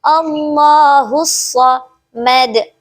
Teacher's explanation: Hussa di sini memiliki hukum bacaan alif lam syamsiyah sebab terdapat huruf alif lam di antara huruf ha dan sha. Jadi alif lamnya tidak dibaca namun huruf ha hussa langsung digabung menjadi satu yaitu Allahus samad. Mad di sini juga memiliki hukum bacaan qalqalah kubro karena diberhentikan ada waqaf.